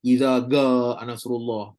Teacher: Kalau baca jim huruf ga ni pula orang-orang Mesir.